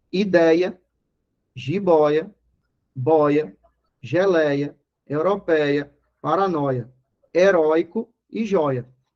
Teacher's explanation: elas são palavras paroxítonas e que a sílaba tônica é um ditongo aberto